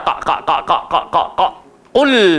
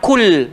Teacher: Qul, pakai pangkal lidah. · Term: qaf